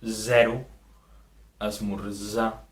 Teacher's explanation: La Z sona com una S sonora, Z, i la trobem en mots com zero, esmorzar.